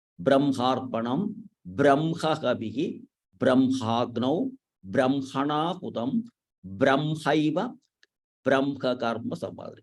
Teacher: But in this case alone, when this Ha is followed by Ma or Na or Na, these three, first you have to chant this Ma. Brahmarpanam, like that.